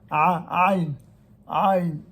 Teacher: c'est bien une lettre gutturale, donc avec du fond de la gorge ou du gosier.